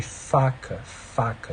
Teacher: lábio inferior encosta no dente superior